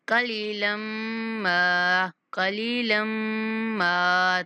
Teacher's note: لام کے بعد یا مدہ ہے اس لیے لام کو کھینچنا ہے اور اس کے بعد لام کی تنوین کو میم کے ساتھ ملاتے ہوئے میم پر غنہ کر کے تھوڑا کھینچ کے پڑھیں گے